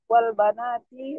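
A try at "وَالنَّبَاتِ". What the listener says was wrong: Wan nabat bukan wa banat.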